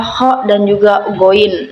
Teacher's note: itu huruf yang keluar dari ujung tenggorokan atau adnal halki